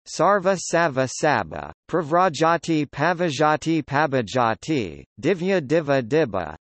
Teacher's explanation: The sequence vv resulting from assimilation changes to bb